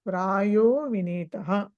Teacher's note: విసర్గ ఏమైంది అక్కడ ఉకారం అయింది ఉకారం అయింది తర్వాత గుణ సంధి అయింది యాక్చువల్ గా సో కాబట్టి ఓ అయింది అది సో అట్లా తెలుసుకుంటారు మీరు